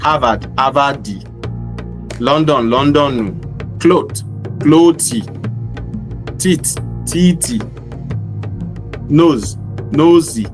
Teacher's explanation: If an uneducated Yoruba speaker sees a word ending in a consonant, they instinctively add e or u to it.